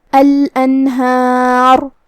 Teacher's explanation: ہمیں را کو ظاہر کرنا ہے اور اسے تفخیم سے ادا کرنا ہے کیونکہ اس پہ جزم ہے اور اس سے پہلے والے حرف پہ بھی جزم ہے، لیکن اس سے پہلے والے حرف پہ مطلب ہا پہ زبر ہے تو ہم را کو تفخیم سے پڑھیں گے.